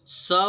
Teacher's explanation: स वर्ण अघोष वर्ण है